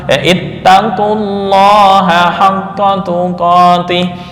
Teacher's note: Hasilnya adalah bacaan huruf qaf berharokat dhammah langsung bertemu lam tasydid karena lam didahului oleh dhammah. Maka lam pada lafal Allah dibaca tebal sesuai kaidah.